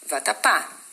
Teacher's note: você fala a última sílaba mais forte